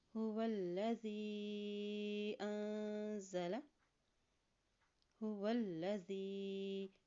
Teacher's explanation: واو کی زبر کو لام کے ساتھ ملاتے ہوئے پڑھیں گے کیونکہ لام کے اوپر شد ہے